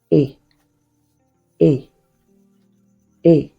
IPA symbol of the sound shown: ɪ